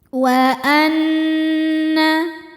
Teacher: muntaha wa anna nunnya dhunah musyaddadah karena nun bertasydid cara bacanya berdengung tahan dengungannya kurang lebih dua harakat